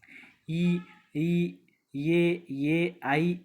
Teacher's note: வாய் திறக்கும் முயற்சியுடன் நாக்கின் அடி ஓரமானது மேல்வாய் பல்லை பொருந்தும் முயற்சியால் பிறக்கிறது